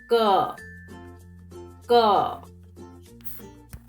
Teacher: So when you speak ka, you should feel the sound is coming from the back of your mouth and the air is stopped inside and no ha sound is coming